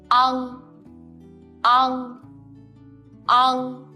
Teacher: When you pronounce the final on, make the o sound, then put the root of tongue against the soft palate. Feel the voice coming out from the top of your head.